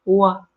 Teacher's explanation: the W has no closure of the lips and the teeth